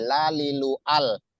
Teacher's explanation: Hasil suara yang dihasilkan itu tipis, ya, lam, karena dia mempunyai sifat istifal, artinya menghamparnya lidah kita di bawah, ya, di bawah, ya, di pelataran mulut.